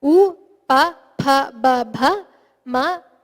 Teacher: The fakara, the F sound there is oshtya varna. So all of these are pronounced with the lips.